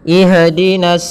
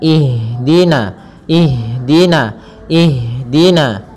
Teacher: artinya mengalir nafas kita mengalirnya nafas kita maka jangan sampai huruf Ha ini memantul